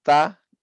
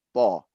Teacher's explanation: Pada saat kita rendahkan lidah, ya, dia bunyinya ta. Kita naikkan lidah bagian belakang gini menjadi to. Inilah disebut dengan sifat.